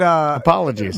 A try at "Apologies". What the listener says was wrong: Slurring again. Slurred your apology. Put on your white voice.